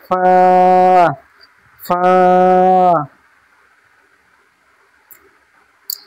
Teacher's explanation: ফার মাখরাজ হচ্ছে নিচের ঠোঁটের ভিজে অংশ, নিচের ঠোঁটের ভিজে অংশ এবং সামনের উপরে দুই দাঁতের আগা, সামনের উপরে দুই দাঁতের আগার সাথে লাগিয়ে উচ্চারিত হয় ফা, ফা।